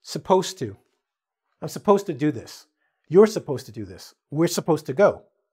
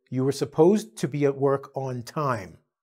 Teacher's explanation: When you're speaking quickly, we usually drop the U sound and we also drop the D sound. So it comes out to supposed to.